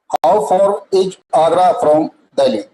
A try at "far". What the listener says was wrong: फोर नहीं, फार, मुंह खोल के।